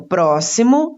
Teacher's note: próximo está acentuada a antepenúltima sílaba, pró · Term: antepenúltima sílaba tônica